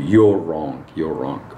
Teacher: we put a w or a w sound between the two